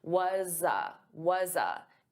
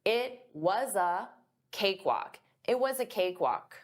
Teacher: I'm taking that was but it's a z. It's a voiced sound. So I'm going to transfer that sound to a. So you hear z was a. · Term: linking the sounds